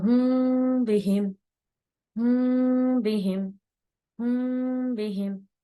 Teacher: اگر میم ساکن کے بعد با آ جاتا ہے تو اخفا کریں گے میم ساکن کا، یعنی میم کی آواز کو ہم چھپائیں گے